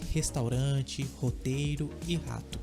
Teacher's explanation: a forma como você pronuncia o r nessas palavras Seria a mesma coisa que o H em inglês